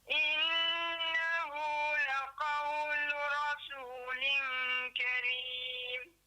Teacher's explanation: Qaw Cepat sikit. qaw daripada dalam, kemudian lu dengan ra tu kena cepat. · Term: huruf qaf